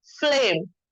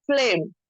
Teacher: इनके दरमियान कोई वॉवेल नहीं है, तो एफ की आवाज आधी निकलेगी और एल की आवाज पूरी